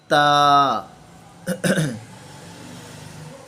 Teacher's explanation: زبان اوپر والے دانتوں کے اندرونی والے اوپر والے جو دانت ہیں ان کے اندرونی سائڈ کی جڑوں کے ساتھ ٹچ کرے گی